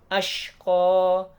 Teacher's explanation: shin itu sifatnya adalah tafashi, menyebar kuat di mulut. Kalau gampang ingatnya itu sin tapi yang luar biasa.